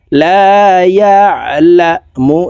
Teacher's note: আইন হরফকে হলকের মধ্যখান থেকে চাপ দিয়ে উচ্চারণ করব।